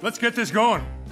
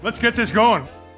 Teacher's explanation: You can hear only one T sound. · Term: connected speech